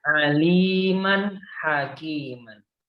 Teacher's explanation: Jadi dia itu dibaca jelas atau izhar halki bukan karena alif yang ada di halki karena tanwin bertemu dengan H.